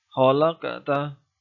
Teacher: bacaan qalqalah sughra dikarenakan salah satu huruf qalqalah bertanda baca sukun atau asli mati, yaitu berupa qaf